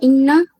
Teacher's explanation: इन्ना में मुशद्दा का कायदा है गुन्ना होगा